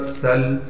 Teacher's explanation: سین میں سیٹی ادا کریں گے اور سین کو آگے لام سے ملائیں گے، اس لیے کہ لام ساکن ہے۔